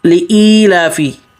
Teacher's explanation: یا حمزے کے بعد یا مدہ ہے نا تو ایک الف مد کے برابر کھینچنا ہے، جتنی دیر انگلی کھولنے میں رکھتی اتنی دیر پر ای پہ کھینچنا ہے، لافی، لام پہ کھڑا زبر اس پہ بھی کھینچنا ہے، فی واضح۔